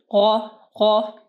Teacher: یعنی آپ کی زبان کے جو پیچھے کا طرف ہے اس کو آپ کو تالو کے ساتھ ٹچ ہونا چاہیے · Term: غین